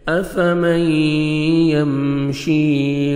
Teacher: شین کو کھینچیں گے، یا مد ہے 1 سیکنڈ آپ نے کھینچنا ہے شین کو، یا ساکن سے پہلے زیر ہے۔